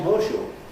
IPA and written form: ˋhɔːʃuː (horseshoe)